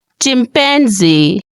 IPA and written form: ˌtʃɪmˌpænˈziː (chimpanzee)